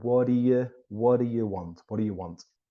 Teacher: the t almost disappears